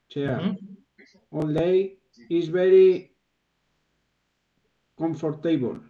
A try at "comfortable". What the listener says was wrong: Esta parte media no se pronuncia, ¿vale?